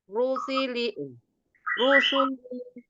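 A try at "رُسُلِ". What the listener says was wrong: Sinnya nggak boleh tebal. Shu nggak boleh kayak huruf shin. Tapi sin. Rusuli.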